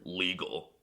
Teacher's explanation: the L is also quirky because it's often pronounced as a w